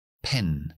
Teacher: Así que cuando palabras se inician con la p por ejemplo no activamos la voz hasta que no llegamos a la parte donde hay voz que será la vocal o una consonante Sonora · después hacemos y pi pero fonéticamente es sin voz nada Ok es bilabial juntamos los labios es oclusivo explosión eso es la p en inglés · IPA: /pen/